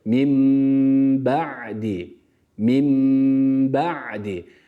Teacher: b harfini telaffuz etmeden önce Mim harfini B'ye bağladık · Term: İklap